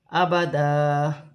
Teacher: 2 زبر کی تنوین پر وقف ہوگا تو ایک الف مدہ میں بدل جائے گی